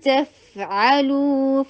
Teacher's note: آئین کو حلق سے ادا کر کے ضمہ مد کے لیے 2 حرکہ لانگ کیجئے